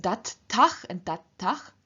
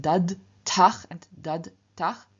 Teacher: in front of endings that begin with voiceless t and t, the voiced d at the end of the stem simply also loses its voice. So instead of dad tach and dad tach, we have dat tach and dat tach.